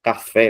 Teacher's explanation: o fé mais forte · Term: oxítona